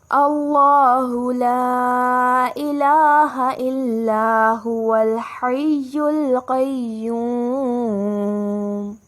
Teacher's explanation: لا پر ہمیں مد نظر آ رہا ہے تو 2 سے 5 کا مد دیتے ہوئے آواز لمبی کریں گے